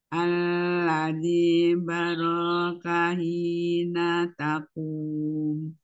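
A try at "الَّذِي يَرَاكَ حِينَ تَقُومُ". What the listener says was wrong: Hurufnya iya Umi bukan ba. Alladzi yaraka hina taqum. Hina taqum. Nanya hati-hati jangan diayun.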